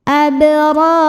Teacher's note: Berikutnya ada qalqalah sugro, karena ada huruf qalqalah yaitu ba yang sukunnya asli dan ada di tengah bacaan. Cara bacanya dipantulkan dengan pantulan yang kecil. Abrar. Ra pertama ini dibaca secara tafkhim karena ra-nya ini berbaris fathah.